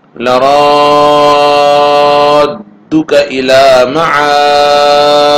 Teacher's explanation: 4 الف مد کریں گے، دال میں قلقلہ ہوگا کیونکہ دال ساکن ہے